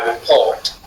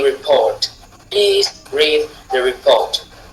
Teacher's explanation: c'est celui où la syllabe accentuée se retrouve en deuxième position. Là, on parle du rythme da-do, da-do.